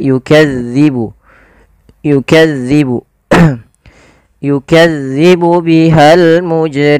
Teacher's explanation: Zal ini tidak boleh dibaca atau tidak boleh diganti dengan huruf zai. Contoh yukazzibu tidak, tapi dia yukadzibu. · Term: huruf zal